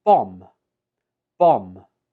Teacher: In written English, this is spelled with the letter B, but when we speak it, we omit the B and just pronounce it as bomb.